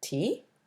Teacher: a word like tea, with rising intonation, may mean an offering